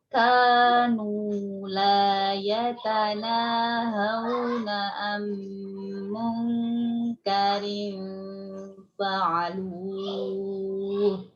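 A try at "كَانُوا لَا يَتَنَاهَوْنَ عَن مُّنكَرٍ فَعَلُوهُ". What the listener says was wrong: Masih dinaber ya lu. Lembut aja sudah. Fa'alu.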